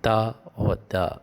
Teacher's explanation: your tip of the tongue should be in contact with your upper teeth when you say ta or da. Only in the example of ta or da.